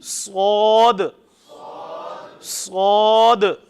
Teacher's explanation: اس کے اندر میں نے آپ کو پہلے بھی ذکر کیا تھا، بعض جو غلطی کرتے ہیں کیا پڑھتے ہیں؟ واو کے ساتھ پڑھ دیتے ہیں، حالانکہ واو اندر موجود نہیں ہے